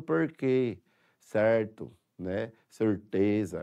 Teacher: exemplo o r retroflex em Sergipe nós não usamos né mas vários estados do país já estão usando o r retroflex